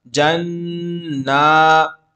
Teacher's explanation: گنہ اس لیے کر رہے ہیں کیونکہ نون پر تشدید ہے، نون میم پر تشدید ہو تو گنہ ہوتا ہے.